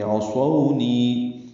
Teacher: عصونی میں عین وسط حلق سے ادا کریں گے، صاد پر پڑھیں گے، سو وولین ہے، نی یا مدہ ہے، دو حرکات یا مدہ کو لمبا کریں گے، عصونی۔